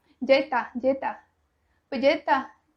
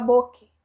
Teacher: Corta o S, simplesmente eles tiram da palavra.